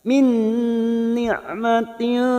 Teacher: Min ni'matin ain sukun jangan samakan dengan hamzah. Ain sukun memiliki sifat tawasud.